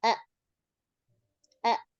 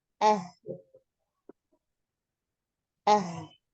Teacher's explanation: Kalau Hamzah pita suara tutup. A, A. Kalau Ha, ah. Pita suara lebih terbuka. Ah, ah. Kayak gitu kan.